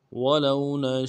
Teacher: لام کو واو کے ساتھ ملانا ہے، واو لین ہے بغیر کھینچے پڑھیں گے